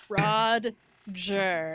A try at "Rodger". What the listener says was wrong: It's Rod. I want you to specifically pronounce the D.